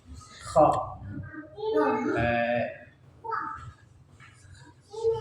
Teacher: Kho makhrajnya tenggorokan yang bagian atas